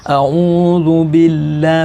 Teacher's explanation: dalam lafaz billah, lafzul jalalah, ini juga jangan dibaca terlalu tebal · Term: halus